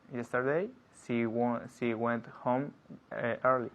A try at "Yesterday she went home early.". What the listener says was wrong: Not home early. Home early. I'm linking the words, yeah? Because that's how we speak. We speak linking words all the time.